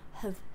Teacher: And have is reduced, so also you barely open your mouth.